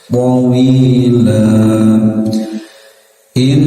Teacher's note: nun bertasdid tahan sekitar 2 harokat